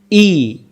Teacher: হামজা অক্ষর হলকের প্রথম থেকে শক্ত করে পড়তে হয়